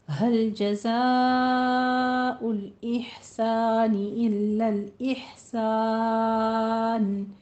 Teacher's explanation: हा को वस्ते हलक से खूबसूरती से अदा कीजिएगा।